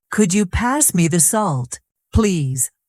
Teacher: Notice how the voice rises on could you and falls gently at the end. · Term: rising and falling tone